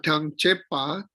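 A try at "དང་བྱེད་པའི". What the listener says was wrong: He said tang chepe. You said tang chepa.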